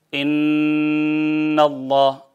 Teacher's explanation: جیسے ان اللہ، یعنی نون کی آواز کو ناک میں لے جائیں، 2 حرکت کے برابر روک لیں، میم کی آواز کو وَمِمَّا روک لیں، نون ناک کے بانسے میں، یہ بانسا جو ہے خیشوم، اس میں روک لیں 2 حرکت کے برابر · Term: غنہ